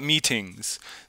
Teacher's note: That T remains an unvoiced stop instead of alternating.